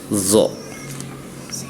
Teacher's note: Jadi kalau huruf D itu ujung lidah bertemu dengan gigi seri atas